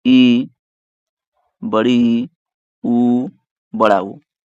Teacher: संवृत स्वर, इसमें मुख लगभग बंद होते हैं, मुख लगभग बंद होते हैं, पूरा पूरा नहीं बंद होता है लेकिन लगभग बंद होते हैं।